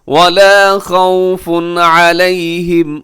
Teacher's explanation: خوف پہ تنوین ہے، تنوین کے بعد عین حروف حلقی میں سے یہاں کیجیے گا اظہار